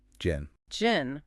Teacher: But for Jen, with an N, your lips stay open and your tongue touches the roof of your mouth just behind your teeth.